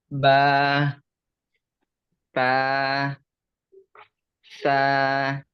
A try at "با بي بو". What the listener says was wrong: لا يا أستاذ، با، بي، بو، حرف واحد فقط مع المدود الثلاثة.